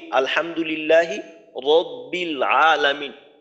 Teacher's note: এই রটাকে মোটা করে পড়লাম রব্বিল, কারণ রর উপরে জবর আছে